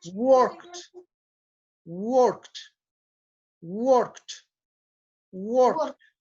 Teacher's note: entonces, vas a mirar ahí en el tablero que tenemos y dice que el ejemplo es work, la palabra que dijiste work, y como la K es una consonante que no produce vibración, entonces el sonido que tiene que ir al final de la palabra es el sonido de una T. Entonces tienes que tratar de pronunciar la K y la T juntas.